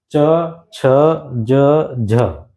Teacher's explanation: नहीं लिया वो बाद में बताऊंगा दोस्त च छ ज झ इनका उच्चारण करो तो आपकी जीभ आपके दंत से थोड़े पीछे लगेगी